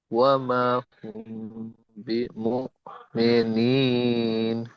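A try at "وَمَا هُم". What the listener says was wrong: ওয়ামা, টান দিতে হবে, ওয়ামা হুম। এখানে মিম সাকিনের পরে বা, ইকফা, ইকফা এর শাফাবি, তাই আমরা এখানে একালিফ গণনা করবো মিম সাকিনকে, হুম।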